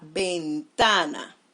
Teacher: su mayor golpe de voz en la penúltima sílaba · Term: palabras graves